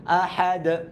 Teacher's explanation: যে হরফে আমরা থেমে যাব সেই হরফে জজমের উচ্চারণটা নিতে হয়। আর ডালের মধ্যে যদি আমরা জজমের উচ্চারণ নিই সেটা হবে কলকলা হরফ, আওয়াজটা রিপিট হবে